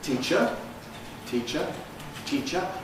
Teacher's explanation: The e is pre-fortis clipped because it's got a following ch. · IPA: ˈtiːʧə, [ˈtiːʧə]